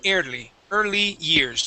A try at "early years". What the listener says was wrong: ER instead of ear ER early years early years that's it nice job